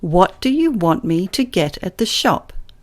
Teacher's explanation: Stresses occurred at regular intervals, didn't they, when I spoke? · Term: stressed time language